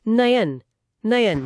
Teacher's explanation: इसका तर्क भी ध्वनि प्रवाह में है। जब आप ए के तुरंत बाद अ बोलते हैं तो ध्वनि ए अ से फिसलकर आई बन जाती है। जैसे ने प्लस अन।